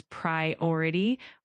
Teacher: The word priority is pronounced as priority with the emphasis on the second syllable